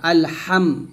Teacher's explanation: যখন মিম সাকিনের পরে এই 26টি হরফ আসবে তখন গুণ্য হবে না। আলহাম, এই যে মিম সাকিনের পর দাল, গুণ্য হবে না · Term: মিম সাকিনের ইজহার